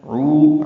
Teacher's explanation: تدعو دال ساکن پہ قلقلہ ہے. عو عین وسط حلق سے ادا کرتے ہوئے 2 حرکات لمبا کریں گے